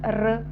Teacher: र चा उच्चार करत असतानी जिभेचा मूर्घेला स्पर्श होतोय